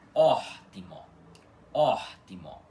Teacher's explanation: Então aqui no começo, aqui no começo da palavra fica or timó, tá? Com esse ó aspirado mais forte, enquanto as outras duas sílabas da palavra timó ficam menos fortes, tá? Mais fracas. · O O inicial é aspirado e o resto da palavra é átono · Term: O aspirado